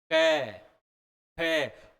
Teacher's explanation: भाग चौड़ा हो जाएगा स्वास वायु कंठ के पास रोक लेगी इकट्ठी हो जाएगी जैसे ही जीभ को नीचे करेंगे और बोलेंगे क क तो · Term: कंठ व्यंजन